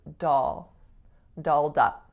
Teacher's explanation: a dark L is an L in which you use the back of your tongue so it's not dull its dull dull dull